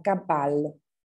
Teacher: recuerden la pronunciación de la doble L como una L alargada, ¿sí? Y no como una G.